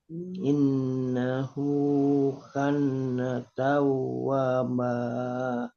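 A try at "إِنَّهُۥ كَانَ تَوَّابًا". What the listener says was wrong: Jangan double n-nya panjang. Jangan double n.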